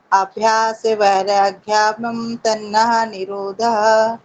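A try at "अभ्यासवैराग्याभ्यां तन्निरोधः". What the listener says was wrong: अभ्यास वैराग्याभ्याम तन्नः निरोधः नहीं तत् निरोधः। तन्निरोध या तत्निरोध, या उसको तोड़ के आप पढ़ सकते हैं ऐसे। देखिए यहाँ लिखा हुआ आपके, इसको तोड़ के पढ़िए। अभ्यास वैराग्याभ्याम तत् निरोधः।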